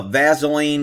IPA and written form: ˈvæsəliːn (Vaseline)